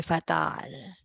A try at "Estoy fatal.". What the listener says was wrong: Oh, you have to add that, acting. Dapat estoy fatal. Dapat ganun din ang tone ng voice natin, okay?